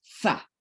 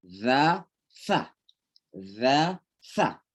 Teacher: Kalau sa ya kayak digigit dan didorong pakai udara keras, sa. Ya, sa. Za, sa, ya.